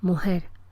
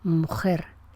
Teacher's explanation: en el sur, la articulación habitual es relajada, mujer, frente al norte, donde la realización es fuerte